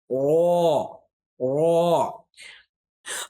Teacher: را کو جب ادا کریں گے اور اس کو جب پڑھیں گے تو موٹا پڑھیں گے, آواز کو جو ہے تھوڑا موٹا کریں گے